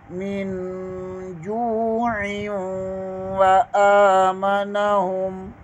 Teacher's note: ہا پیش کے آگے میم ہے اور دوسرے میم مشدد ہے، درمیان والا میم ساکن کر دیں گے اور مشدد ہے یہاں پر غنہ ہوگا، غنہ کریں گے۔